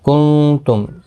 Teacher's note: نون ساکن کے بعد حروف اقفا کا تا آئے، اقفا حقیقی ہوگا۔